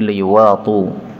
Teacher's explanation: liwati'u hamzahnya boleh dihapus menjadi liwatu